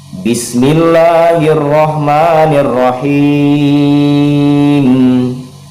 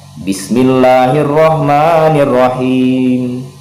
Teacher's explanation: ia boleh dibaca pendek, boleh dibaca qasar 2 harokat, bisa juga dibaca tawassud atau pertengahan 4 harokat, bisa juga dia bisa dibaca panjang, dibaca full 6 harokat. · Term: mad arid disukun